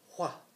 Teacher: Or instead of while, they would say while. It's almost like you hear the H in there.